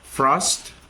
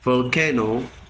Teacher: The difference is voicing. F is voiceless. V is voice.